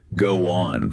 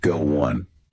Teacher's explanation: Take go on for example. Sometimes you'll hear a tiny W sound pop up in between go and on making it sound a little like go one. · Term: intrusion